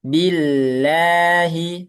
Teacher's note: billahi lamnya tipis ya karena sebelumnya kasrah